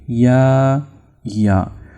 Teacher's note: इसकी जो आवाज है जुबान के दरमियानी हिस्से और तालु के दरमियान से पैदा होगी